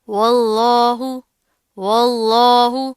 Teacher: اب یہاں پر کیا ہے، اللہ سے پہلے زبر آ رہی ہے، لفظ اللہ کو موٹا پڑھیں گے، لیکن جو واو ہے اس کو موٹا نہیں کریں گے